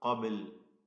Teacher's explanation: ബാഇന്റെ സുക്കൂൻ ഖൽഖല നൽകി ശബ്ദം ചലിപ്പിക്കുക